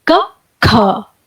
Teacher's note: जब आप क बोलते हैं तो थोड़ी हल्की सांस बाहर की तरफ निकलती है उसका उच्चारण करते वक्त, और जब हम ख बोलते हैं तो थोड़ा ज्यादा सांस बाहर निकलता है